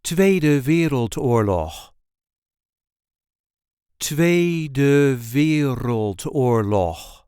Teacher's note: there is a light emphasis on the first syllable of the second word